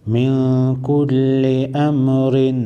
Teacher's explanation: نون ساکن راغلی دی، وروسته د کاف حروف اخفا کې راغلی دی، اخفای حقیقی بکو